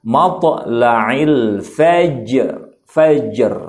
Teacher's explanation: ada sakinah muqalqalah yaitu huruf jim ya. Maka sama-sama dipantulkan. Ada dua berarti huruf qalqalah dalam ayat ini.